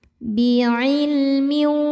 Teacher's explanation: Lam sukunnya disebut lam mutlak ya. Karena ada lam sukun yang tidak berhadapan dengan lam ataupun ro. Maka lam dibaca jelas. Biilmin. Berikutnya ada idghamunah karena ada tanwin kasrah menghadapi huruf wau.